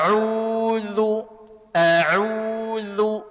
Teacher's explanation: Tegaskan saja penyebutan Hamzah karena dia mesti tahkik.